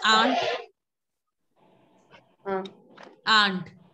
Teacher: don't pronounce the T, just pronounce till nasal sound